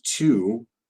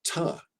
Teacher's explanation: we pronounce it ta with a schwa because it's unstressed. So there's this interrelation between not stressing a word and then a reduction of the vowel.